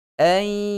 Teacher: pastikan huruf hamzah yang keluar itu adalah hamzah yang keluar daripada pangkal tekak kita.